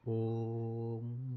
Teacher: आपका प्लुत स्वर जिनको बोलते समय, जिनका उच्चारण करते समय 3 गुना समय लगता है